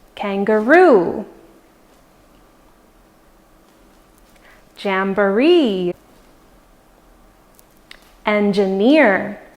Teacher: there are also some words where the stress falls on the last syllable